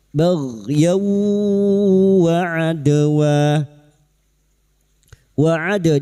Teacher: fathatanin bertemu wawu idgham bi gunnah masuk pada huruf wawu dan mendengung selama 3 harokat